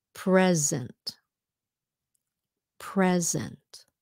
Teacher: because the S is in between two vowels it's pronounced like a z